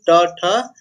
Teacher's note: अब मूर्धा क्या होता है, जो जीभ का निचली भाग होता है उसे हम मूर्धा बोलते हैं। तो जीभ हमारा स्पर्श करेगा मूर्धा को, तब जाके ट ठ इसका उच्चारण होगा